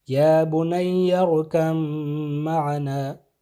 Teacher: تو یہاں پہ با کی آواز نہیں آئے گی بلکہ میم کی آواز آئے گی، یا بنی ارکم معنا۔ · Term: ادغام